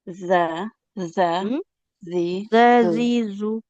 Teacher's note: Ujung lidahnya tempelkan ke ujung gigi seri atas, Ibu.